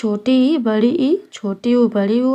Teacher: मुंह खोलने के आधार पर स्वरों को चार मुख्य भागों में बांटा गया है। संवृत यानी बंद जिसमें छोटी इ बड़ी ई छोटी उ बड़ी उ आते हैं।